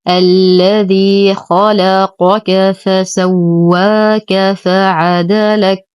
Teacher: نهمس الكاف وقفا لأنها ساكنة